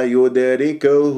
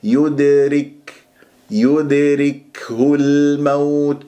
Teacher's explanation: الدال مقلقله في كلمه يدركه ساكنه في وسط الكلام قلقل الصغرى والكاف مهموسه